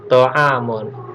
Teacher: Alif atau a ini berasal dari tenggorokan, dia dibaca jelas. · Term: izhar